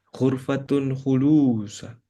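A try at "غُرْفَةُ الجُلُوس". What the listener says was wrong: Ghurfatu itu jim. julus.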